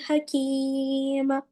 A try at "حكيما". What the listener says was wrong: हकीम नहीं है, दो जबर की जगह एक जबर पढ़ना है।